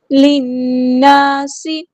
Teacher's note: لام کو ہم نے نون کے ساتھ ملا دینا ہے